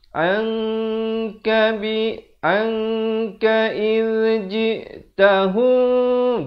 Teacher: Asalnya an bari atas bertemu nun. Tapi bila datang kaf, jadi hukum ikhfa, kita samarkan.